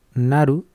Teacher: la R japonesa estaría a mitad de camino entre una R española y una L española